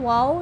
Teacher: واو ہونٹوں کو گول کر کے پڑھیں گے